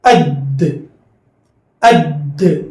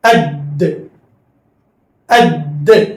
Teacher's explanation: دال کا مخرج ہے زبان کی نوک اوپر کے دانتوں کی جڑ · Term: قلقلہ